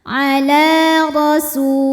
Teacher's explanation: huruf ra dibunyikan secara tafkhim karena harokatnya di atas, maka ra tebal.